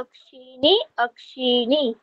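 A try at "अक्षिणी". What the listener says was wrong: ঠিক, এখানেও একটা বিশেষ আছে অক্ষি শব্দের ক্ষেত্রে, যেটা আমরা দন্তন্য পড়ছিলাম এতক্ষণ, সেটা মূর্ধন্য হবে, ঠিক আছে, অক্ষি শব্দের ক্ষেত্রে। অক্ষি অক্ষিণী অক্ষিণী।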